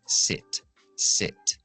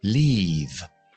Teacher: La lengua no está tan adelantada, está más atrás y más baja. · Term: la i corta